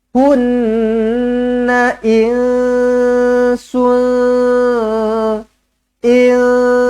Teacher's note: Nun sabdu wajibul gunnah, dengungkan dua harakat. Hunna insun.